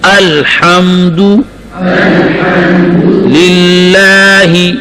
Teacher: دال کے پیش کو معروف پڑھنا ہے، مجہول نہیں پڑھنا